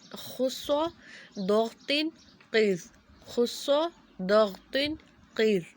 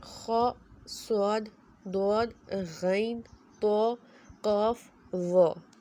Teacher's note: ہم نے انہیں موٹا پڑھنے کے لیے اپنی زبان کی جو جڑ ہے، ہماری جو زبان کا آخر والا حصہ ہے، اس کو ہم نے اوپر تالو کی طرف بلند کرنا ہے، اور آواز کو منہ کے اندر ہی رکھنا ہے